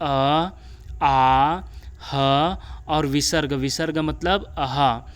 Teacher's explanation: अ, आ, ह और विसर्ग मतलब अहा, इसका भी उच्चारण कंठ से होता है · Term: कंठ वर्ण